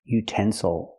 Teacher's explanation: with three syllables we stress the second syllable utens Souls again the third syllable is not stressed so we cannot say ill we have to say oh